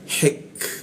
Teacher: huruf k itu mati ada hembusan udara